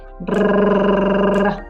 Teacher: R, faut le rouler ici juste derrière les dents. Il faut vraiment faire sortir l'air et puis faire vibrer juste la pointe de la langue. Ça fait brrr.